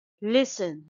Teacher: it's a two syllable word and stress is on the first syllable